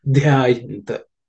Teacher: This Dha is the fourth letter in the third varga, so it has to be aspirated with a little more exertion.